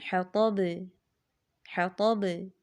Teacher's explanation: حرف مقلقلہ پر وقف ہوتا ہے تو وہ ساکن ہو جاتا ہے، تو ایسی صورت میں بھی قلقلہ زیادہ سنائی دیتا ہے، اس کی زیادہ آواز آتی ہے